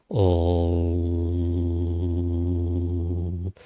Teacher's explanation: Entonces, la vibración se produce en la nariz, por eso decimos la nasalización. Se produce en la cavidad craneal y en la medida en que comenzamos a vibrarlo correctamente, con intensidad, en realidad es lo más importante, es la parte más importante, ese anushvara, esa nasalización. · no es una M. Se llama Anushvara, no es una letra, es la nasalización del sonido que veníamos pronunciando antes, ¿no?